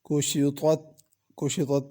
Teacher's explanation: کشطت، کشطت میں کاف باریک ہے، پہلے طا ہے پھر تا ہے، طا کو پر پڑھنا ہے اور تا کو باریک پڑھنا ہے